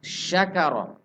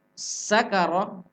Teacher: kalau shin tengah lidah bertemu tengah langit-langit, ini sin ujung lidah. Sudah beda tempat keluar.